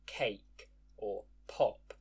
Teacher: aspiration, a little burst of air with the sound. If you hold your hand in front of your mouth and say a word like cake or pop, you should be able to feel the difference between the first and last sounds.